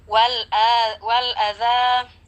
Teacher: Wal adza ada lam alif lam qamariyah di sana, kita baca jelas dan jangan sampai terpantulkan menjadi wala.